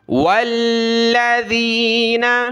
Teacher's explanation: واو کو لام کے ساتھ ملایا، لام کے اوپر یہ تشدید ہے تو اس کو ہم نے جمع کر سختی کے ساتھ پڑھنا ہے